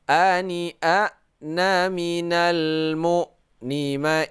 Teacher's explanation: Karena baris fathatain bertemu dengan hamzah, maka kita baca secara nyata ya, secara idhar menyatakan yaitu tidak berdengung.